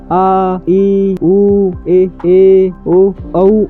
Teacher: इन्हें बोलने में दो मात्रा का समय लगता है। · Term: दीर्घ स्वर